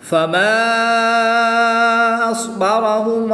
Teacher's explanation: الف مدہ کے بعد حمزہ دوسرے کلمے میں ہے تو یہاں پر مد منفصل ہوگی. 2 سے 3 الف تک کھینچ کر پڑھیں گے. صاد ساکن ہے تو اس کی ادائیگی کا خاص خیال کرتے ہوئے اس کو پر یعنی موٹا پڑھیں گے.